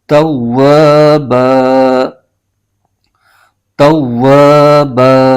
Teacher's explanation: یہاں پر وقف کریں گے تو اس صورت میں با کی جو تنوین ہے 2 زبر ہے تو یہ الف میں بدل جائے گی، تو یہاں پر الف بن جائے گا۔